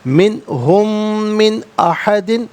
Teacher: من نون ساکن، اس کے بعد حرف علقی حمزہ ہے تو نون ساکن کو اظہار کے ساتھ پڑھیں گے، اخفا یا غنّہ نہیں کیا جائے گا